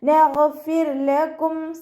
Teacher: അപ്പോൾ ഇവിടെ റോക്ക് സുക്കൂനാണ്, മുന്നേ ഉള്ള അക്ഷരത്തിന് കെസ്റ വന്നതുകൊണ്ട് നമ്മൾ അവിടെ താഴ്ത്തി ഉച്ചരിക്കുക